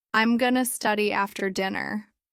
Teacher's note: Going to often becomes gonna.